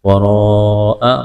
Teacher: را کے اوپر زبر ہے، موٹا کریں گے، لمبی مد ہے، اس کو کھینچنا ہے۔